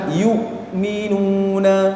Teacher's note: hamzah itu di tenggorokan bagian bawah